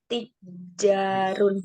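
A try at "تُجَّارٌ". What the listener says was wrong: Bukan tijar, domah tuhnya.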